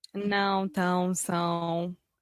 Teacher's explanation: as vogais nasais em português, que não existe em inglês e nem existe em espanhol